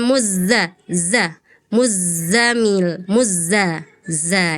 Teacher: Zai itu punya sifatnya shofir artinya ada desisnya